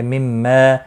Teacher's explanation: مما میم مشدد پر گنہ ہوگا